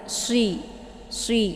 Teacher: upayakan keluar suaranya itu secara shafir ya. Mana shafir itu anginnya itu jelas